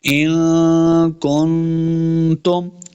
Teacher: پھر آگے پھر نون ساکن کے بعد آگے تا ہے، تو دونوں پہ ہم نے اخفاء کا قاعدہ کرنا ہے، یعنی غنہ کر کے پڑھیں گے